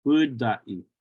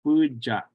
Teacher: In the Shurs area, it's pudai with the D. But in other places, it's pujai with that CH sound.